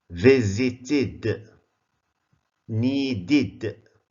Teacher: Sometimes it's pronounced as id, visited, needed. Why? After the sound t and d.